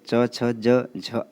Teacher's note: च वर्ग जो कि तालू से उच्चारित होता है च वर्ग में च छ ज झ आते हैं और छोटी